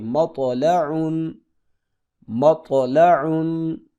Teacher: تا کی آواز باریک اور بغیر جھٹکے والی ہوتی ہے، جیسے یتلون، جبکہ تو کی آواز موٹی اور جھٹکے والی ہوتی ہے